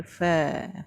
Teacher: Istifal pangkal lidah berada di bawah. Tak ada kita sebut pa.